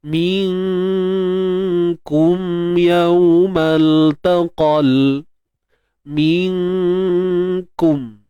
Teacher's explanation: Kita sorokkan, itu ikhfa. Dan kita dengungkan dengan keadaan yang nipis, sebab huruf kaf adalah huruf yang nipis · Nun mati bertemu kaf, hukumnya ikhfa haqiqi. Kita sembunyikan nun, jangan sebut nun tepat pada makhraj. Kita sorokkan, itu ikhfa.